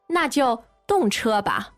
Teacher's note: first of all, you have this fourth tone, na, meaning In that case.